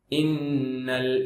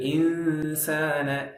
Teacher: இன்னல only குன்னா இருக்கு இன்சான்ல குன்னாவோட இக்பா இருக்கு